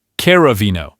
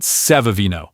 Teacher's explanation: Whenever you see the letter C right before an E or an I. It makes a soft ch sound. You know, like in the word cheese, it's not a hard C- sound and it's definitely not an S sound.